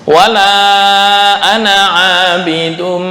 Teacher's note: Ana ketika wasol hanya satu harokat lewat.